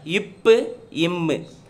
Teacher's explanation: இத்து, இந்து. டேஸ் ஆகிய இரு மெய்களும் மேலிதழும் கீழ் இதழும் பொருந்துவதால் பிறக்கின்றன